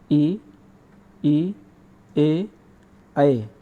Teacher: जैसे ई, ए, ऐ, यानी जब हम इनका उच्चारण करेंगे तो हम इनका उच्चारण तालु से करेंगे, हमारी वायु तालु पे जाके टकराती है, इसलिए इनको तालव्य स्वर कहते हैं।